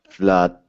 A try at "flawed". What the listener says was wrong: Almost. The tongue went back to the teeth.